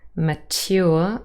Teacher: mature, which is T-Y, in two separate syllables without Yod coalescence